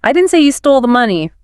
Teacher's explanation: what if you stress the word say?